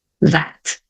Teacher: exemplo aqui ó that eu só vou falar at mas antes eu vou colocar minha língua atrás dos dentes de cima